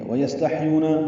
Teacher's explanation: سین اور ہا دونوں ساکن ہیں، ان میں ہمس ہے، یو واو مدہ ہے، 2 حرکات لمبا ہے۔